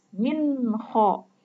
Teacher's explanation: ada nun mat bertemu dengan salah satu huruf izhar yaitu kho, maka dibacanya harus jelas